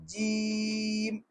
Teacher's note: یہ ناک میں آواز جا رہی ہے، ناک میں آواز نہ جائے، جیم۔ جیم، ہا، خا، خو، ہونٹ اس میں گول نہ ہو، تھوڑی کھردری آواز اور موٹی آواز، خو۔